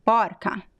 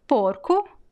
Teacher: feminine words they tend to have this open ah and masculine words be closed oh